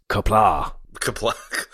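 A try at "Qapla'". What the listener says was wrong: Actually, it's not a hard K. It's a more of a sound.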